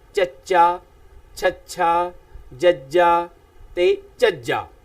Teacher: ਤਾਂ ਇਸੇ ਤਰ੍ਹਾਂ ਨਾਲ ਨੰਬਰ 2 ਚ ਵਰਗ ਵਾਲੀ ਸਤਰ ਬੋਲਣ ਵਾਸਤੇ ਜੀਭ ਮੂੰਹ ਦੇ ਸਖਤ ਤਾਲੂ ਨਾਲ ਚੁੰਦੀ ਹੈ, ਭਾਵ ਜੀਭ ਦਾ ਜਿਹੜਾ ਬਲੇਡ ਵਾਲਾ ਪਾਸਾ ਉੱਪਰਲੇ ਕਠੋਰ ਤਾਲੂ ਨੂੰ ਜਦੋਂ ਛੂੰਹਦਾ ਹੈ ਤਾਂ ਮੂੰਹ ਦੇ ਵਿੱਚੋਂ ਧੁਨੀ ਦਾ ਉਚਾਰਨ ਹੁੰਦਾ ਹੈ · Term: ਸਖਤ ਤਾਲੂ ਸਪਰਸ਼ਤ